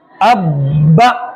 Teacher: اس میں سختی کریں گے اور اس با کو 2 بار پڑھیں گے, ایک بار پچھلے والے کے ساتھ ملا کر اور ایک بار اس کو الگ سے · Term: تشدید